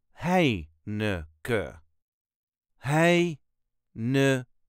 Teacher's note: there is a very slight emphasis on the first syllable